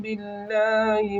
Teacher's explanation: نون زبر من، نون الف زبرنا، نون مشدد کا گنہ ہوگا، لفظ اللہ کا لام باریک پڑھا جائے گا اس لیے کہ لفظ اللہ کے لام سے پہلے زیر ہے